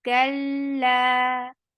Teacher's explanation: Kal, very clear sound, ka, and attached with lam. Lam will get tawassut, and then it is 2 counts long.